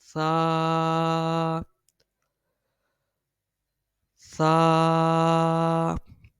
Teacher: اس کی ادائیگی جو ہے وہ زبان کا سر اور اوپر کے دانتوں کے اندرونی کنارے سے ادا ہوتا ہے، یعنی زبان کا جو سر ہے اس کو اوپر والے جو دانت ہیں ان کے اندرونی کنارے سے ملائیں گے تو یہ سا پڑ جائے گا اور اس میں سیٹی کی آواز بھی نہیں آئے گی۔